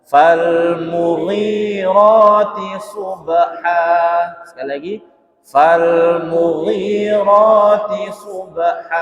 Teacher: Fal mughirati subha, hanya panjang sama kayak yang lain, hanya dibaca mat iwad, dibaca panjang 2 harokat